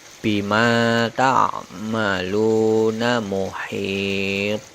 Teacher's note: Selanjutnya huruf qalqalah to pada kata muhitun. Kemudian huruf to dibaca sukun, dimatikan, kemudian baru diikuti huruf bunyi sebagai getaran atau pantulannya, sehingga bunyinya menjadi bima ta'maluna muhit.